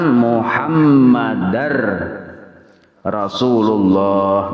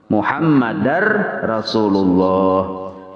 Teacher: huruf dal tanwin masuk ke ra-nya batasdid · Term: idgham